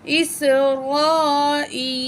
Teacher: مد متصل ہے، حمزہ اسی لیٹر کے اندر ہے، ٹھیک ہے؟ ہم مد کو 5 الف کے برابر کھینچ کے پڑھیں گے